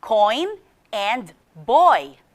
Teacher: the first sound is o and it glides to the second letter i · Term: vowel diphthongs